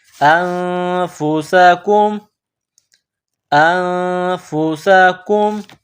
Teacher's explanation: نون ساکن کے بعد فا ہے, حروف اخفا ہے تو آواز ناک میں پیدا کرنی ہے, غنہ کرنا ہے.